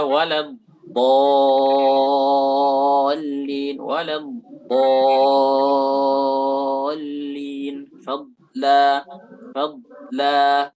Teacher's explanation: Kata beliau dad itu dari hafatih, hafatul lisan maksudnya, dari tepi lidah. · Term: dhad